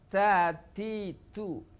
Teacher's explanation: Yang ketiga adalah istifal. Ta punya sifat hamas, keluar udara.